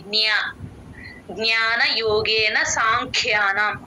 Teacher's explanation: నుంచే అలవాటు చేసుకోండి జి జ్ఞ గ కింద న వత్తు లాగా చెప్పకూడదు జ్ఞ అన్నప్పుడు య తో ఎండ్ అవ్వాలి